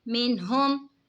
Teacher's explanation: نون ساکن کے بعد حروف ہلکی کا ہا ہے تو اظہار ہوگا یعنی گناہ نہیں کریں گے، نون ساکن کی آواز کو ظاہر کر کے پڑھیں گے.